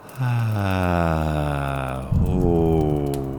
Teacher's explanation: Ah, oh. The pitch is descending, but it doesn't have to be as low as mine.